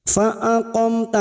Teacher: Fa aqamta mim sukun lagi bertemu ta idhar safawi, dibaca jelas tanpa mendengung.